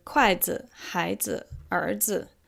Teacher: when it's combined with another kind of noun, it makes it a noun, but it doesn't have a tone in it when it's combined. So 孩 子, we don't say 孩 子, it's just 孩 子.